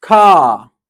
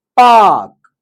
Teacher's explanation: Here, we are not pronouncing R sound anywhere. But, still it's very clear while pronouncing this word.